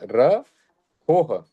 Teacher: र और हो के बाद विसर्ग है तो हो के बाद एक हल्का सा ह की साउंड आती है